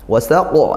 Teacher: kita baca waqaf maka qalqalah kubra pantulannya kuat ya